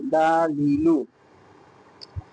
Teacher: জিহ্বার আগার কিনারা সামনের উপরে দাঁতের মাড়ির সঙ্গে লাগাইয়া লাম